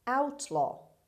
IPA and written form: ˈaʊtlɒː (outlaw)